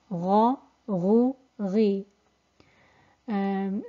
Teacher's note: And it's an elevated letter, so we have an elevation of sound, elevation of the back of the tongue, we have a concaving of the tongue, we have echo in the mouth, and we have narrowing in the throat, resulting in a thick letter. And when it's pronounced with one of the three vowels, fatha, dhamma, kasra, gha, ghu, ghi. · it's pronounced from the top of the throat near the soft palate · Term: ghain